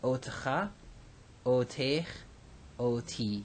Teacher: Now here we have our aleph tav, which we're familiar with, et, but with an o class vowel in the first syllable, and then a spiranted tav · In each of these cases, you have an O class vowel on the aleph and a spiranted tav.